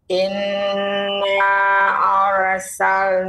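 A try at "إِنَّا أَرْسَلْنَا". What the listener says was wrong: kurang panjang Ibu. Kurang panjang, kurang panjang pengucapan inna.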